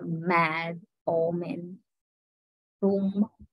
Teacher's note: So the name of ma is voiced bilabial nasal. And voiced alveolar nasal, na.